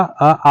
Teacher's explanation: इसमें दोस्तों कंठ में आपका अ आ होगा, और तालव्य में ई होगा